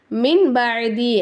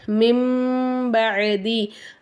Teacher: நம்ம என்ன செய்யணும் சுக்குன் பெற்ற நூனை தூக்கிரனும் இங்க மீம் வச்சிரணும் சரிங்களா சுக்குன் பெற்ற நூனை மீமா மாத்தி மின் பதி அப்படின்னு சொல்லாம மிம்பதி அப்படின்னு நம்ம மாத்தி உச்சரிக்கணும் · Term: யக்லாப்